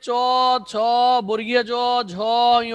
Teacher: এই ধ্বনিগুলো উচ্চারণের সময় আমাদের জিহ্বা তালুতে স্পর্শ করছে, সুতরাং এই ধ্বনিগুলোকে আমরা বলবো তালব্য ধ্বনি, তালব্য ধ্বনি।